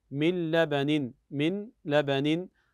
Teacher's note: النون الساكنه اتى بعدها حرف الادغام الا وهو اللام ونوع الادغام بغير غنه